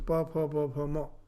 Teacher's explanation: Pa, here only the lips are touching each other.